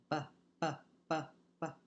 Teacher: if I turn my voice on, the P can turn into a B